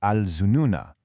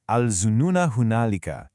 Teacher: If you were to pause on this word, you'd pronounce that final "a" sound, "al zununa". But when you connect it to the next word, that written alif goes silent. You read it as "al zununa hunalika".